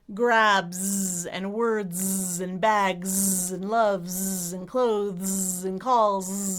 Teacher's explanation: most of the time that S will be a Z sound as in zebra, the voiced version /z/.